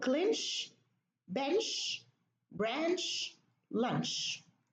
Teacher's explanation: each word ends with a cha after an N. So what we do here, we reduce the cha to a sha.